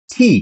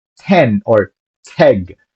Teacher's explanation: most English speakers from the US the UK and Australia would pronounce an aspirated T so like T so we say 10 or t but in